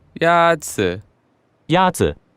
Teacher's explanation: the first tone is a high level tone · is pronounced with a first tone in Mandarin